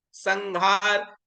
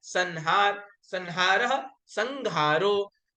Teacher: जो ह है वो घ में परिवर्तित हो गया